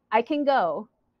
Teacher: Go is stressed, go is the main verb.